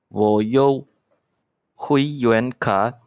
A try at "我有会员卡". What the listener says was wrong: Okay, the first two. Do you see there is a third tone meet with the third tone? So you have to say 我有.